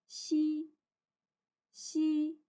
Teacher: untuk huruf X kita baca seperti huruf S, namun bunyinya dari tengah lidah